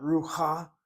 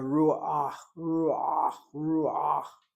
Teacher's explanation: This patach is not a legitimate vowel. It's a glide from the U sound to the het.